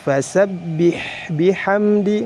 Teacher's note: huruf H harus dialirkan dan dikeluarkan nafasnya karena memiliki sifat hams dan bihan di mim juga harus dialirkan bihamdihamdi dibaca jelas Hamdi